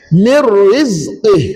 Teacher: Maka nun mati masuk dalam ra dan dibaca tanpa dengung.